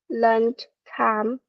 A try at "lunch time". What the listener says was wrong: yes, lunch time. So remember the sound there.